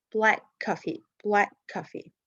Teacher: In the second word coffee, it starts with a consonant. So we drop one of these two K sound